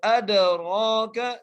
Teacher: وَمَا، میم کو 3 الف کی مقدار کھینچ کر، اس کے بعد أَدْرَاكَ، دال پہ قلقلہ کرتے ہوئے را کو ایک الف کی مقدار کھینچ کے پڑھنا ہے، کاف کو بغیر کھینچے پڑھنا ہے.